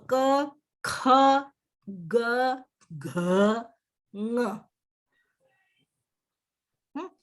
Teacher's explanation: क इज अल्प प्राण, ख इज महाप्राण, देन ग इज अल्प प्राण, घ इज महाप्राण, and then nasal sound